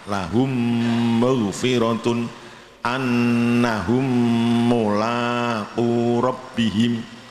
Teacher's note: Kemudian kita lanjutkan nomor 5. Mem sukun bertemu mem sama dengan mem tasdid, lahum maghfiratun. Artinya harus didengungkan, ya. Dengungnya sama 2 harokat, lahum maghfiratun annahum mulaqu rabbihim, disebut idgham syafawi atau idgham mimi atau idgham misli.